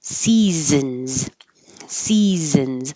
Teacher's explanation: And seasons looks all like S's, but only the first S sounds like an S. The middle and the last one sound like Z's